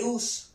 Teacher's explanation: Vemos que la tonalidad baja. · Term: sílaba átona